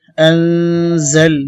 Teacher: এখানে নুন সাকিনের পরে জা আসছে, ইখফা গুন্না